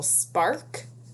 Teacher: The K shuts off that R sound, the consonant K.